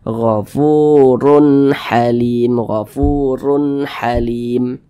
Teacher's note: huruf ro yang memiliki tanda baca dhammah atau dhammatain, maka dia dibaca tabkhim, dibaca tebal. Makanya huruf ro ini kita tebalkan sehingga pangkal lisan kita itu naik terangkat ke atas ketika kita mengucapkannya.